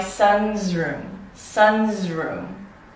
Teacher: with voice consonants that precede the S, in this case, we'd be pronouncing this S more as a Z sound